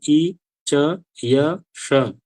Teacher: चारों का उच्चारण स्थान एक ही है सबका तालु ही। तालु होने के बाद भी आप बोलते समय देखेंगे ई, च, य, श भेद आ रहा है ना।